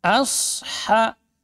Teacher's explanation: Asha a-nya tipis sadnya yang tebal.